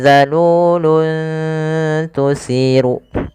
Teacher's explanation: Pada lafal luntu di sini ada dommatain bertemu dengan huruf ta. Maka cara membacanya samarkan suara tanwinnya kepada huruf ta. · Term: bacaan ikhfa